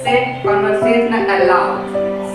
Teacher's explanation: Both syllables are stressed, but the one in capital say sounds stronger or louder than the one in lower case con.